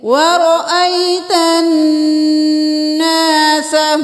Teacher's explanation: نون پہ کیوں دیر لگائی؟ کیونکہ نون پہ تشدید ہے تو غنہ کریں گے.